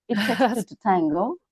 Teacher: when two T comes together, we pronounce only one strong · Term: gemination